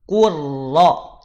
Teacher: Ku manyom saat masuk pada huruf ro, balikin bibirnya